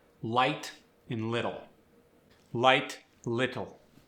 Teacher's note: Keep the L the same. It's clear and forward.